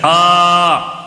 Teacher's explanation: کھڑا زبر ہونے کی وجہ سے ایک الف کے برابر کھینچنا ہے